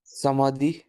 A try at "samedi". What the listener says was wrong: সামাদি না সামদি, straight sound, এই ওটা বেসিক্যালি সাইলেন্ট মতো আছে, হ্যাঁ, ওটা, ও সরি, ওকে, হ্যাঁ, ইলে সামদি, ফাইন, দেন,